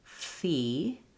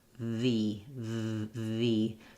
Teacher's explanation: So if you say, for example, fee, the mouth position for the F and the V is exactly the same. It's just that my voice is on and there's vibration here for the V sound. So try saying fee and then turn your voice on, V, V, V.